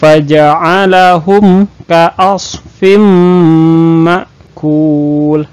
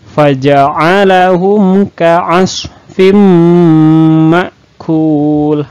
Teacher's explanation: Bunyi tanwinnya atau bunyi huruf n-nya itu hilang dimasukkan ke huruf Mim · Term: Idgham Bighunnah